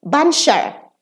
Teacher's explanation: and the cha is reduced to sha